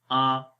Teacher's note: زبر منہ کھول کر پڑھی جاتی ہے، اور جھٹکا بھی نہیں دیں گے اور لمبا بھی نہیں کریں گے